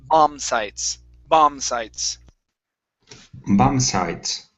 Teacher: the B at the end of this word is silent